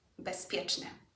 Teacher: Bezpieczny is the one that's changed. The consonant that has changed is the Z, and it now sounds like an S because of the P that comes after it. The P has influenced the Z.